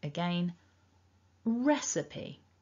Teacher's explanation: you really want to force that first syllable out much more strongly than the other two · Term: stress the first syllable